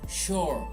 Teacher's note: The for is like far, for sure, for sure. And although it's SU, it should sound like sh, the sh sound, sure. It's sure, that long vowel sound, right?